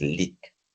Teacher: many language users of Black South African English pronounce the long E as the short vowel E. So that is why leak is pronounced as leak.